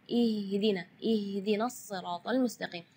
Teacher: Ya, itu tidak boleh, itu keluarnya dari dada. Sedangkan makhraj huruf H itu adalah dari tenggorokan. Jadi keluarnya tipis karena H itu termasuk huruf di antara 28 huruf hijaiyah yang paling lemah adalah huruf H.